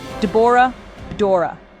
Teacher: The two opening consonants swap places for easier pronunciation.